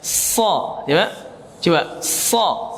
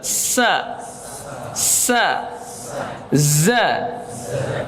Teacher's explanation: Sofir adalah tajamnya suara dikarenakan ia keluar dari celah yang sempit antara ujung lidah dengan kedua gigi seri atas dan bawah. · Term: sifat sofir